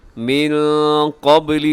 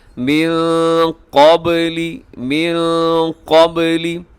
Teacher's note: نون ساکن کے بعد قاف اخفا کیجیے گا، قاف موٹا ہے، با قلقلہ ہے